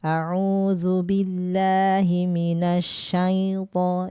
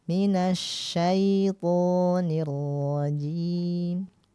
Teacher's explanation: Jadi ketika menyebutkan asyaitoni, nah itu jangan jangan ada ke hidungnya.